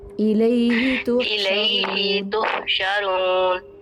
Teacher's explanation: الیہ کریں گے تو ہا کے بعد ہم یا کو بڑھا رہے ہیں